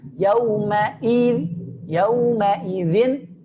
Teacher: perhatikan i-nya tipis dan huruf hamzah di pangkal tenggorokan. Yauma idzin jelas hamzahnya, pangkal tenggorokannya.